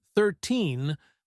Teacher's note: the stress is on the second part, teen